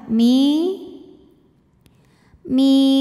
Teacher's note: ya sukun yang sebelumnya berbaris kasrah maka huruf mim kita panjangkan dua harakat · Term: Thobi'i